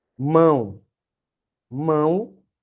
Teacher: Claramente eu estou lendo o O como se fosse U, né? Mão. Então, nesse caso, o O vai ser uma semivogal e o A vai ser uma vogal.